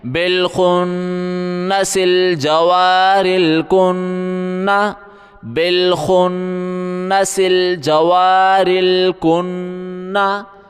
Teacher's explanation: نون کے اوپر تشدید ہے، سختی کریں، غنہ بھی کریں